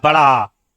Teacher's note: बड़ा आ, मतलब पूरा खुल गया भैया, सबसे अधिक खुल गया। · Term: विवृत स्वर